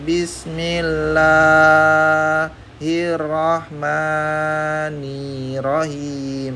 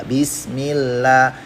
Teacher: Nah, kepanjangan la-nya. La-nya sama ma-nya kepanjangan. Jadi cukup 2 aja. Bismillah. Biar cukup 2 itu pakai trik di ayun.